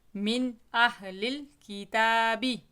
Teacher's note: ہم ناک کے اندر آواز کو نہیں ٹھہرائیں گے، مطلب کہ وہاں پر ہم ہننا نہیں کریں گے۔ بالکل واضح اور صاف انداز میں آپ نے من کو اور اہل کو پڑھنا ہے، من اہل الکتابی۔